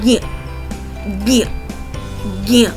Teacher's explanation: ज का उच्चारण स्थान तालु है, जबकि ञ का उच्चारण स्थान नासिक्य और तालु दोनों हैं। जब इन दोनों का मिलाप होता है, या हम कहें कि जब हम इन दोनों वर्णों की ध्वनियों को मिलाते हैं, तो जो उसमें विकार आता है वो विकार ज्ञ का आता है।